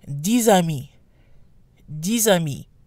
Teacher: diva and when followed by a vowel the excess pronounced and sounds like a Z due to liaison